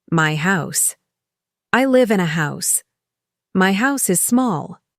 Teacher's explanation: function words like in, a, is are softer. That's the American rhythm.